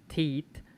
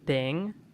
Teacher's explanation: muchos dialectos de inglés de zonas como Irlanda o India, por ejemplo, pronuncian este sonido de th como una T